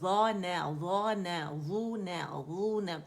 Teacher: ضا موٹا ہو گیا، نون باریک ہو گیا